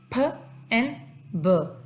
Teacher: Bilabial plosive वो होता है कि जब हमारे लिप्स जो है they meet together to produce a sound फ एंड ब, ठीक है।